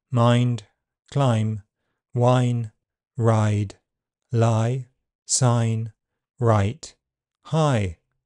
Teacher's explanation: a diphthong vowel sound that starts in a mid-open unrounded position, R, and moves towards a front near-close near-front position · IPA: /ʌɪ/